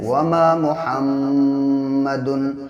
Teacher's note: میم پر جب بھی تشدید ہوگی تو غنہ کریں گے، ناک میں آواز کو ایک الف کے برابر روکیں گے